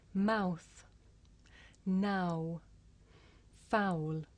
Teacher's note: the shape the mouth makes changes from the beginning of the sound to the end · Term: double vowel sound